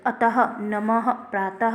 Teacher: विसर्ग का उच्चारण ह हलंत ध्वनि के समान होता है